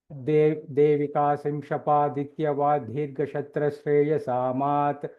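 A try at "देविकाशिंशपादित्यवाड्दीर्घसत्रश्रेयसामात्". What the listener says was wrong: Slightly the Mahaprana is heard for Dhirga. That is Dirgha. Gha is Mahaprana.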